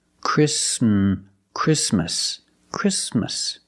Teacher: We don't say Christmas. The T is between consonants, so it is silent. Link the sound s with the m.